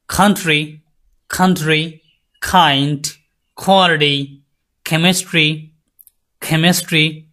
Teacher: জিহ্বার গোড়ালি আর আপনার হচ্ছে তালু দুটো একসাথে করে একটা ভাইব্রেট করে সাউন্ড বের হবে সেটা হবে খা এর সাউন্ড সো এটার জন্য যে লেটার গুলা